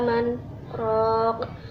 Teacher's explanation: terdapat bacaan saktah yang artinya harus berhenti sejenak tanpa bernafas · terdapat bacaan qalqalah kubra sebab huruf qaf yang sukunnya baru karena waqaf · Pada lafaz qila terdapat bacaan mad tabi'i sebab kasrah diikuti ya sukun. Kemudian pada lafaz man raq terdapat bacaan idgham bila gunah sebab nun sukun bertemu ro.